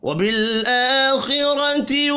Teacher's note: آخرتی حمزہ کے اوپر کھڑی زبر ہے, ایک الف کے برابر کھینچ کر پڑھیں گے. خا کو اور را کو پر پڑھنا ہے, حرکات کھینچ کر نہیں پڑھی جائیں گی.